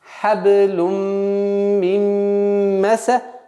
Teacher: Вот здесь у нас появляется правило идгам камиль, полноценный идгам с полноценным назализацией, с полноценным ассимиляцией. И поэтому хаблюм мим переходим к касру.